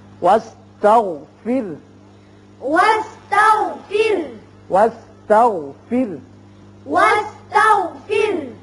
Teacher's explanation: یہاں را بھی باریک ہوگا اس لیے کہ پیچھے زیر ہے. واستغفر واستغفر واستغفر واستغفر انه كان إنه كان نون مشدد ہے, غنہ کریں گے ایک الف کے برابر.